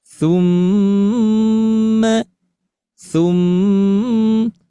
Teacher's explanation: didengungkan dari bacaan ghunah musyaddadah yang tentunya keluar dari alkhaisyum dan termasuk gunah musyaddadah ini adalah bacaan gunah yang akmal paling sempurna sambil tentunya ditahan dinaikkan vokalnya iramanya dari vokal 1 2 3 tum tum ya tum tum seperti itu ya.